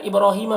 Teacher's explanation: बा में कलकला होगा, रा को पुर पढ़ेंगे और खड़ा ज़बर है जो अलिफ मद्दा की तरह है।